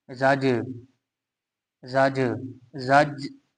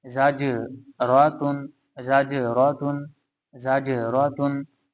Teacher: आगे है जा मुतहर्रिक है, जीम साकिन है क्योंकि इसके ऊपर जज्म है, और ये जीम जब साकिन होगा तो फिर ये हरूफ कलकला में से भी कहलाएगा, इसलिए यहाँ पे कलकला करेंगे यानी आवाज लौटती हुई निकलेगी